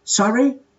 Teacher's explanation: if you have not heard something well, you can say, sorry, but in a rising intonation